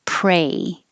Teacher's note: be spelled both ways and it sounds the same prey and the vowel is a a your tongue has to rise